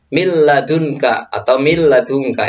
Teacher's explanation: Nih di sini ada huruf nun sukun bertemu dengan lam ya. Lamnya itu nanti menggantikan huruf nun sukunnya ini, jadi nggak dibaca min tapi dibaca mil. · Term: idgham bila ghunna